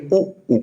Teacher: देखिए इसमें किसका हेल्प लिया जा रहा है, इसमें ओष्ठ का, मतलब ओठ का हेल्प लिया जा रहा है, तो इसका उच्चारण स्थान है ओष्ठ